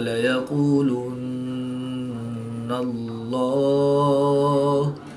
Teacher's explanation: نون مشدد میں ہمیشہ غنہ ہوتا ہے تو یہاں پر ہم غنہ آنی کر کے پڑھیں گے۔